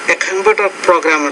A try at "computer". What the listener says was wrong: Say computer, a computer programmer, not computer, but computer. Stress on the second syllable.